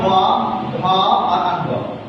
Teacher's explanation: इनके उच्चारण में हमारी जो है स्वर तंत्रियां होती है वो स्वर तंत्रियों में कंपन होती है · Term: घोष व्यंजन वर्ण